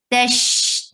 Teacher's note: Tash, ta is short because there is only a fatha, and the wasat sheen has rukhawa, and sheen has tafashi. The sound will be spread.